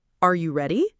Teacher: For yes no questions like are you ready, the voice almost always rises at the end.